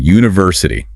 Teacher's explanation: Those ending in in Asia like university. The stress tends to land on the third syllable from the end.